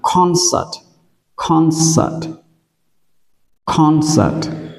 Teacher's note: chúng ta nhớ là trọng âm nó rơi âm tiết thứ nhất